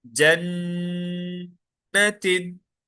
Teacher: एक अलिफ के बराबर आवाज रोक के रखेंगे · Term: गुना